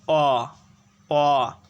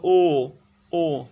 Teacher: যেমন তুমি যদি উচ্চারণ করো অ অ, এবার যদি উচ্চারণ করো ও ও, লক্ষ্য করলে দেখবে যে অ এর তুলনায় ও উচ্চারণকালে ঠোঁট বেশি সংকুচিত হচ্ছে